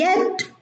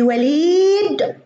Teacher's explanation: حرف الياء في يد ينطق يا، في وليد ينطق إي